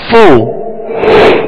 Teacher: اور اس کی مخرج فا کا اوپر کے دونوں دانتوں کے کنارے اور نچلے ہونٹ کا تر حصہ، یہ اس کا مخرج ہے